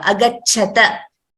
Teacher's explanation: agachata iti tasya tha iti mahapranah na alpapranah